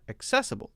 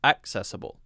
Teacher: I would tend to say accessible to put the stress on the second part.